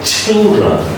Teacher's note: Ch is very interesting sound because ch is unvoiced, and you push lots of it outside, and you say children. L is also coming here, and then a chill, because there are two syllables here in this word, so the chill, the L is an L sound, it's a dark L sound, so it sounds like a children, okay?